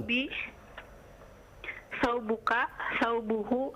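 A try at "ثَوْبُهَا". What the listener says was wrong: Ada huruf yang kurang. Ada huruf yang tidak dibaca. Sabunun, kan begitu asalnya. Thawbun. Afwan, ana sami'tu sabun bis-sad. Thawbun.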